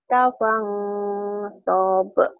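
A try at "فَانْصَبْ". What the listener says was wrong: Jangan panjang. Faida farog tafang sob. Tafang sob. Jangan panjang. Gak ada yang panjangin.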